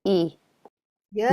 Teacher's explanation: similar place of articulation. Both are palatal.